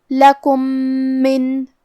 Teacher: کلمت من میم حروف الادغام متماثلین صغیر میں سے ہے اور ادغام کا معنی ہے حرف کو حرف میں داخل کرنا. تو ہم یہ میم کو دوسرے میم میں ملا کے ایک ہی میم غنہ اور تشدید کے ساتھ ادا کریں گے